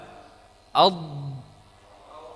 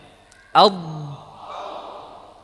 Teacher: inti dari makhrajnya adalah dari sisi lidah, bukan dari ujung. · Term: huruf dhad